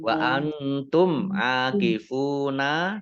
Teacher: nun sukun bertemu dengan huruf ta bacaan ikhfa dibaca samar-samar